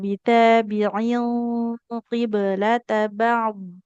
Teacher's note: Bitabi'in huruf ainnya jelas kasrohnya i jangan o.